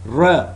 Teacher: it's voiced retroflex approximant